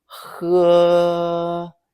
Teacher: It has a first tone, flat and high.